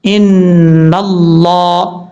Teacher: لفظ اللہ سے پہلے زبر ہے نون کے اوپر, اس لیے لفظ اللہ کو پر پڑھا جائے گا